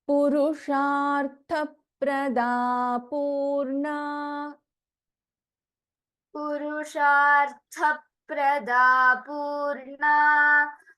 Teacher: In this, Sha is a Shanmukha Sha, Tha is a Mahaprana.